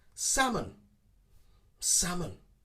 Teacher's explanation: the correct pronunciation is to ignore the l sound